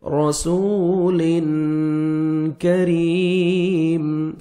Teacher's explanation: کاف کو باریک پڑھیں گے، را کے نیچے زیر ہے، را کو آپ نے باریک پڑھنا ہے